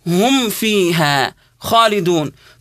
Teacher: حتى علماء التجويد حذروا من اننا نظهر الميم الساكنه عند الفاء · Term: اظهار شفوي